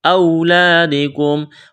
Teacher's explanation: کی وجہ سے۔ یوصیکم اللہ فی، مد ہے کھینچنا ہے، اولادکم، واو ساکن سے پہلے زبر ہے، واو لین ہے، بغیر کھینچ کے پڑھنا ہے